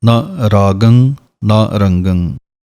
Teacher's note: ਨੰਨਾ ਮੁਕਤੇ ਦੀ ਆਵਾਜ਼ ਸਿਰਫ ਥੋੜ੍ਹੀ ਜਿਹੀ ਦੇਣੀ ਹੈ।